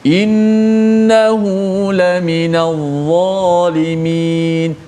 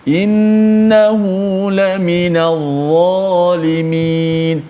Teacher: pada huruf dha itu ditebalkan suaranya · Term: huruf tebal